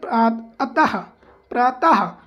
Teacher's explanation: विसर्ग का उच्चारण हा के समान होता है, इसका उच्चारण कंठ से होता है